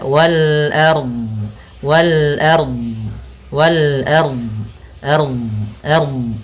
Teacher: huruf ro ketika sukun didahuli fathah dia harus tebal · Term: tafkhim